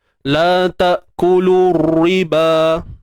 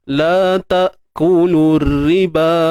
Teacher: Terangkatnya pangkal lidah, teballah raw tersebut.